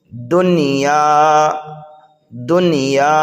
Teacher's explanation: وجہ یہ ہے کہ نون ساکن کے بعد یا ایک ہی کلمے میں آنے کی وجہ سے یہاں پر گنہ نہیں کریں گے بلکہ اظہار کریں گے۔